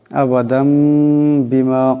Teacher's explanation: আবাদাম, এখানে দালের উপর দুই জবরের তুনবিন, এরপরে বা আসছে, এখানে আবাদাম, এখানে দালের উপর দুই জবরের তুনবিন, এরপরে বা আসছে, এই তুনবিনকে মিম দিয়ে বদলায় পড়তে হবে, একালে পরিমাণ গুন্না হবে